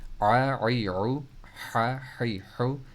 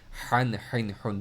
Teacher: عین اور ہا مڈل تھروٹ لیٹرز میں